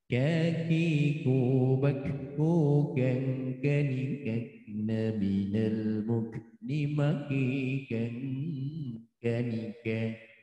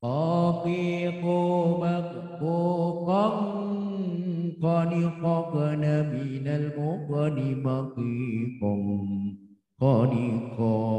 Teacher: Kaf dengan kof. Pangkal lidah depan dan pangkal lidah dalam.